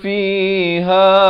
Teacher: makhrajnya di pertengahan kerongkong